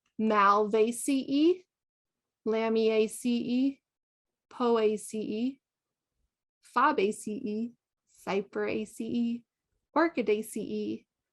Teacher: the AE is a diphthong that's treated like a long E